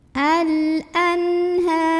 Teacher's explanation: Ada alif lam qamariyah karena ada alif lam yang bertemu huruf qamariyah yaitu hamzah, maka lamnya ini dibunyikan dengan jelas. Al-anha.